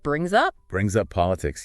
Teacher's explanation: the S in brings might sound like a Z before the vowel